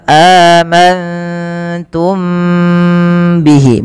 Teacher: mim mati bertemu ba Ini ditahan teman-teman suaranya ditahan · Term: Ikhfa Syafawi, ikhfa syafawi